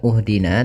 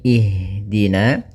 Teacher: maka kita baca hamzah di awal, hamzatul wasl itu kasrah